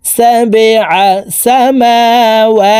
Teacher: এই বা কলকলার হরফ নিচের দিকে ধাবিত করে ধাক্কা দিয়ে উচ্চারণ করতে হবে